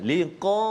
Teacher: Huruf qaf di antara huruf isti'la yang tebal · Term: tebalkan